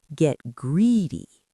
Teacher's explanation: The stress is on greedy.